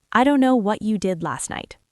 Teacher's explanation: We also drop the t sound in last, so we don't say last night, we say last night. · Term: connected speech